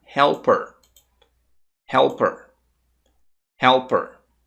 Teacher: p como aqui é her Então você vai tirar o som do h e vai simplesmente conectar com er aí vai ficar helper helper helper Então a partir de agora